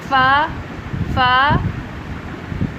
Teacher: اوپر والے دونوں دانت جنہیں ثنایا علیہ کہا جاتا ہے، ان کا کنارہ نیچے والے ہونٹ کے اندرونی حصے سے جب ملتا ہے تو فا ادا ہوتا ہے